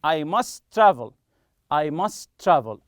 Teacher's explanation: as if it is only one t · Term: link the sounds